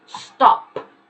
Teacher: That P, if you touch your throat as you say stop, that P is not very vibrant. You don't feel your throat vibrate when you say that.